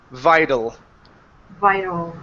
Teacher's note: switch this T to a flap T sound